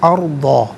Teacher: را ساکن ما قبل عین پر زبر، را ساکن کو پر کر کے پڑھیں گے